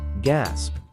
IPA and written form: ɡæsp (Gasp)